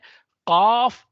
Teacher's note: अगर उसके पीछे वाले हिस्से पर हाथ लगाएं तो वह नरम होता है। तो जो जुबान की जड़ और नरम हिस्से से यह अदा होता है। काफ यह मोटी आवाज होती है।